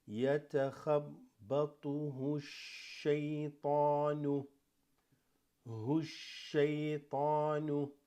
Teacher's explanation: Okay, because that assimilates. This alif lam drops, goes straight to the sheen.